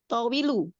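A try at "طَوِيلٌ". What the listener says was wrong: Kan nggak ada alif lam ya, Bu ya. Jadi tawilun, Bu. Iya kan nggak ada alif lam. Ingat-ingat ya, kalau nggak ada alif lam, ya dia domatain.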